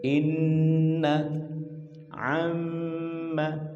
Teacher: Artinya ketika kita mengajarkan anak-anak kita untuk membaca Al-Quran dengan tartil, seperti waktunya kita saat mendapati huruf nun yang bertasydid dan mim pula ada gunnah, maka kita berikan haknya gunnah. Gunnah yang cukup.